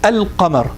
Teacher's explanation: when I said al-qamar, the lam is very clear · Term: lam al-qamariyya